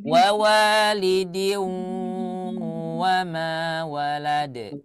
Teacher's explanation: Karena ada huruf nun sebelum waw. Jadi suara gunnah nun masuk ke dalam suara waw. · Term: idgham bi gunnah